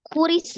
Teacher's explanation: Ro, kasrah, dibaca tipis, kemudian langsung disukunkan ke huruf sin. Sinnya juga sifatnya adalah roghah, alirkan sinnya.